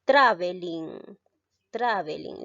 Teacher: La mayor fuerza de voz en este caso recae en la sílaba tra, es decir, en la antepenúltima. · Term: esdrújula